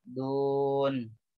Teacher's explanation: Mad arid li sukun. Harus dipanjangkan sampai 3 harkat.